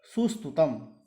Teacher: कर्म प्रवचनी होने से स्तुतम का जो स है उसमें मूर्धन्य आदेश नहीं होता है